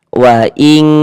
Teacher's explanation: Dibaca samar. Jadi bunyi nun sukun atau bunyi tanwinnya dibaca samar. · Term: ikhfa hakiki